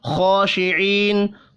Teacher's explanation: خا کے اوپر کھڑی زبر ہے، ایک الف کے برابر کھینچ کر پڑھنا ہے. خا حروف مستعلیہ بھی ہے، پر پڑھیں گے.